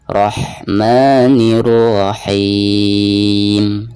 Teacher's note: Nah, di sini ketika membaca rohnya ditebalkan, Rahman, dan ketika membaca ha sukunnya itu harus ada nafas yang mengalir keluar, dan makhraj ha ini keluarnya dari tengah-tengah tenggorokan